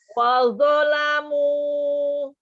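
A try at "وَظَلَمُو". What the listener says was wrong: Zonya tidak panjang.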